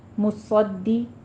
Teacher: صاد کو پر پڑھنا ہے، سیٹی کی آواز بھی لے کر آنی ہے ، دال کے اوپر تشدید ہے، سختی سے ادا کرنا ہے،